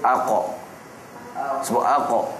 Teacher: pangkal lidah sekali datangnya huruf qf kita sebut AQ sebut AQ dia dekat lidah yang paling pangkal